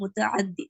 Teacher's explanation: முத்தஹத்தின்னு சொல்றீங்க நீங்க, ஆனா அங்க ஐன் வரும்